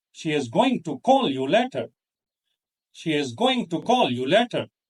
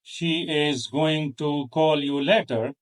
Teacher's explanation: And we don't stress she is, to, or you. Those are function words, necessary but not meaningful on its own.